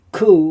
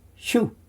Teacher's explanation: And interestingly, the next one, which is called a kubutz, is the same sound, but it almost sounds a little bit longer when we say ku rather than shu.